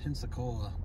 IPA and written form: ˌpɛnsəˈkoʊlə (Pensacola)